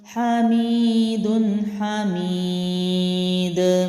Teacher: دال کو میں نے قلقلہ کیا ہے کیونکہ دال حروف قلقلہ میں سے ہے، تو جب آپ وقف کرتے ہیں تو اس پر جزم لگتا ہے تو اس کو پھر ہلا کے پڑھا جاتا ہے، حامید حامید۔